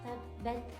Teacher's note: Jadi ketika mengucapkan huruf ta ini harus tertahan secara suara tetapi mengalir secara napas. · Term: syiddah